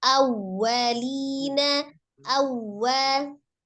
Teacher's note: tekankan waw tasdidnya, monyongkan